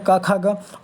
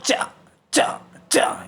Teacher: कंठ से बोलने वाले क ख ग और तालू से बोलते हैं च च च